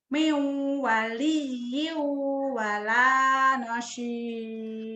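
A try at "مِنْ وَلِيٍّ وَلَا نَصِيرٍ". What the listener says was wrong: kurang nahan. Miunya idgham bigunnah, wali double saja, iunya juga idgham bigunnah. Kurang nahan. Miu wali wala nasir.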